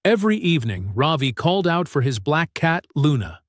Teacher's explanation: Ravi's name has stress on the second syllable